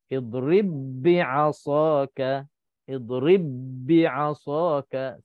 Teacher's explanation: Okey, ba bertemu dengan ba. Jadi kalau kita selalunya huruf ba ni kita kenal huruf ba ni qalqalah. Jadi di sini dia dah tak ada qalqalah dah. Sebab apa? Sebab dia dah jadi idgham. Sebab ba bertemu dengan ba. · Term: idgham mutamathilain